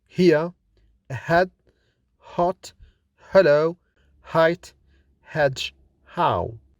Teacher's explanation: this consonant is articulated with the narrowing of the airflow in glottis it is kind of breathing out with another reflection in the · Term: consonant h